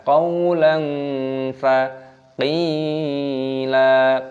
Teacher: fathah tanwin bertemu dengan fa, ini dibaca ikhfa, nah, disamarkan